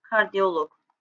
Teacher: vurğu loqdan bir heca önə düşəcək